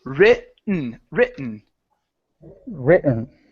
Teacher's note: I'm jumping over the T I don't want to say ridden it's R okay so I'm going halfway so I'm saying the · I'm going halfway so I'm saying the r and then just an n Sound